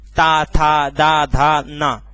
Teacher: जब आप बोलोगे तो आपको ऐसा लगेगा जैसे हमारी जीभ बार बार दांतों पर जा रही हो। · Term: दांत वाले